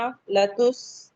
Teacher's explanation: لتس یہاں پہ ہمس کا فائدہ ہو رہا ہے، ہماری سانس کیری آن رہے گی